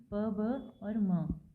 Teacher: Bilabial, जिसमें हम 2 lips का यूज़ करते हैं।